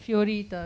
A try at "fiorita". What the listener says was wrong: Sounded like a double R, no? So, it's only one R, I believe.